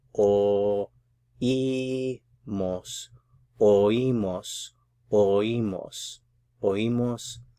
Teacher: But since the accent mark is here, we're actually pronouncing the O and the I in different syllables